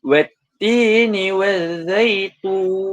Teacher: Jika kita baca 6 pula, kita akan bacanya dengan harakat, itu tun tu kita tekankan secara 6 harakat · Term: mad arid li sukun